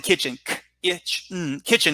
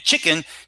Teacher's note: they're both two syllable words they're both stressed on the first syllable